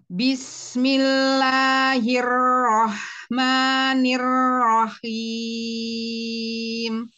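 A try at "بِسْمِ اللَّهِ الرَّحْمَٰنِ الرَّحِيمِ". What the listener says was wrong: Coba untuk sin. Jangan dirapatkan rahangnya. Jadi ada celah. Jangan, jangan dirapatkan rahang. Kalau dirapatkan nanti sinnya yang harusnya tipis itu tertahan, terganjal sama gigi. I keluar. Ke depan. I, coba ibu dibuka. I, sekarang kasroh.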